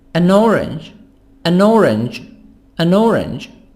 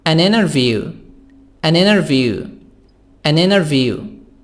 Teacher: Here we make link between the nah sound, the N and O. N and I. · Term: reduced sound